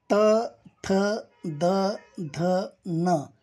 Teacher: त, थ, द, ध, न या वर्णांचं उच्चारस्थान दात हे आहे.